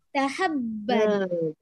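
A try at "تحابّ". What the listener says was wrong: Panjang. Panjang alifnya.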